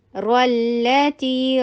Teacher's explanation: را کے اوپر فتحہ ہے تو را ہیوی ہوگا ، جب بھی را کے اوپر فتحہ یا ضمہ ہوتا ہے